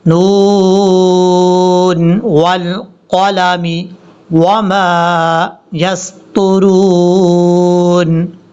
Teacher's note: را کو جب واو سے کنیکٹ کریں گے تو واو کو لمبا کیا جائے گا کیونکہ یہ واو مدہ ہے۔